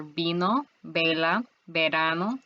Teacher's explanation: notice that this is a b that is not aspirated